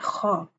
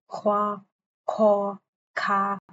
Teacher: خا، اس میں خراش کی آواز ہے، ہونٹوں کو گول نہیں کرنا